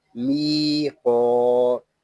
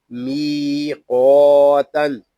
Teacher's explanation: یہاں یا مدہ ہے، میم کو ایک الف تک کھینچ کر پڑھیں گے. می قا تا دو زبر تن می قاتن.